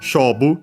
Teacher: accent on the first syllable, it's a Chinese compound